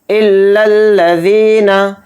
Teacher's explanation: इल्लल, इस तरह से लाम को लाम में मिला देंगे। ज़ाल के साथ यह मद्दा है, ज़ाल या ज़ेर ज़ी को थोड़ा खींच कर पढ़ेंगे। इल्लल्लज़ीना, फिर देखिए अलिफ के ऊपर खड़ा ज़बर है तो इसको खींच कर पढ़ेंगे, थोड़ा खींचेंगे एक अलिफ की मकदार।